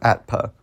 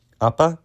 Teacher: the ta might eventually want to assimilate into the bilabial. So we just have no cluster anymore, right? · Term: geminate consonant